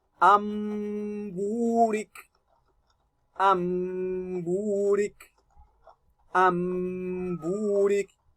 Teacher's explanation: So because of Ba'un appearing after Nun Sakina, you turn your Nun Sakina to Mim and read it with adequate Gunna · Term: Iqlaab